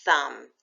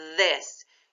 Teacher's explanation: say this put your hand on your throat and say this you feel the vibration so that's a noisy th